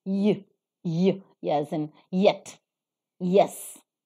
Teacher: the palatal sound in the production of which only the hard palate is involved